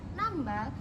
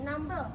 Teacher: yaitu perubahan fonem a menjadi fonem e